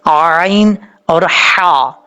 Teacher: عین اور ہا ایک دوسرے کے آمنے سامنے، یہ گلے کے درمیان سے ادا ہوتے ہیں